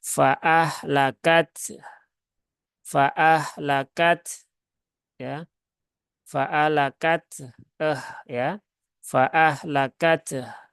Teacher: Maka mengurangi satu huruf, itu masuklah hanjali. Maka taknya dibaca, ya, taknya itu syiddah, haknya itu rokhawah. Maka ya tunaikan sifat masing-masingnya.